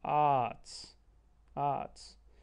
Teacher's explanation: And all we're doing with the British English is just stretching that A a little bit more.